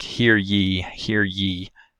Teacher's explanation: the palatal glide ya which is very similar to an e vowel